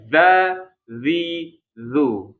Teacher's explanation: ketika mengucapkan zal itu sebenarnya ada juga udara yang keluar, tapi itu disertai dengan suara ya. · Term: jahar